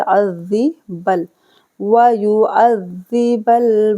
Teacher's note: ज़ाल को नरमी से पढ़ा जाएगा, आइन को हलक से